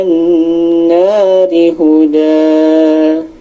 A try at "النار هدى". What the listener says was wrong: Nada setengahnya di awalnya udah dapat, tapi di ujungnya enggak, ya. Contohnya, Alhamdulillahi Rabbil Alamin, Ar-Rahmanir Rahim, Maliki Yaumiddin. Nah, itu sampai ujung setengah. Nah, kurang lebih Maliki Yaumiddin. Nah, itu setengahnya hanya dapat di depan sama tengah doang, ya. Ya, jadi nada setengah yang dari awal sampai akhirnya belum dapat, tapi di awal sampai tengah sudah dapat nada setengahnya.